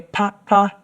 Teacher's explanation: so two low tones and that would mean “fan”